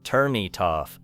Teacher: The final sound of turn connects directly to it, and the final sound of it connects with off. Instead of hearing 3 separate boxes, you hear one smooth stream.